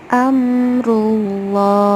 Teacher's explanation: Suara yang keluar pun tidak seperti bunyi A, melainkan mendekati bunyi O. Ya, posisi lidah terangkat, isti'la ya, terangkat yang di belakang, lidah bagian belakang, sambil menekan suara dengan cukup kuat. Kemudian, pada saat pengucapan, mulut seolah penuh dengan suara tersebut. · Karena sebelum lafaz Allah ada huruf yang berharokat dhammah. Jadi dibacanya tebal, menyerupai huruf O. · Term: taglidz